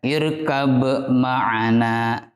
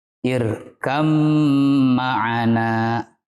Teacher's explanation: Kita leburkan huruf ba terhadap huruf mim. Sehingga yang terdengar hanya suara huruf mim. Tidak boleh kita membaca irkab ma'ana.